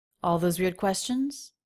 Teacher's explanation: Going up in pitch at the end, yes, no question.